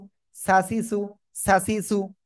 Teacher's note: শাসা শব্দ না, শীষ হবে হালকা, ই করে আমরা উচ্চারণ করব।